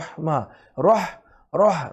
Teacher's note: আর রহ এই হা হচ্ছে গলার মাঝখান থেকে